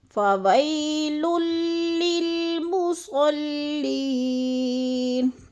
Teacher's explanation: مصلی کی لام پہ جب شد ہے تو اس کو بھی سختی سے پڑھنا ہے، اور لی کو تھوڑا سا ہم نے کھینچنا ہے، یا مد ہے. فویل للمصلین الذین، ذی کو تھوڑا سا لمبا کرنا ہے، یا مد ہے.